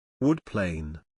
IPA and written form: ˈwʊd ˌpleɪn (Wood Plane)